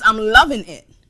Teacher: a feature of African American English called consonant variation, the dropping of the G